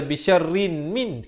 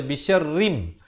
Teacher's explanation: Tapi bila datang mim, jangan baca bisyarrin min, kena baca bisyarrim. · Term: idgham bi gunnah